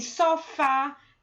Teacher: Perceba que na palavra sofá, a última sílaba, que é o fá, que é a sílaba tônica e por isso ela é acentuada.